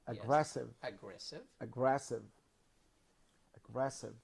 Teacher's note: the second syllable is stressed